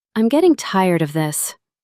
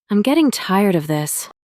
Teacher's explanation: The words getting and tired carry the feeling.